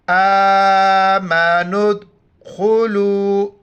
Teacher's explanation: دال کے اوپر جزم ہے یعنی ساکن ہے تو دال کو جھٹکے کے ساتھ قلقلہ کے ساتھ پڑھیں گے